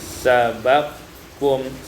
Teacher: sabaqakum idgham kaf fil kaf, diidghamkan kaf pada kaf menjadi sabaqkum.